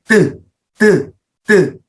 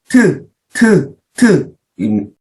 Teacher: 디귿 계열의 자음이 소리를 낼 때는 혀끝이 윗 잇몸을 쳤다가 내려오면서 터트리면서 소리가 나는 거예요. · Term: 파열음